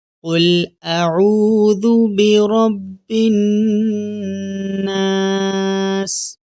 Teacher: را کے نیچے زیر ہو تو را کو ہم باریک پڑھیں گے۔